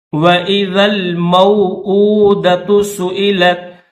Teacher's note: حمزہ کے اوپر الٹا پیش ہے تو اس کو 1 سیکنڈ کھینچیں گے۔